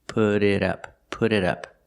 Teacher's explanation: The T in put changes to a fast D, put it, and the T in it changes to a fast D, put it up, put it up.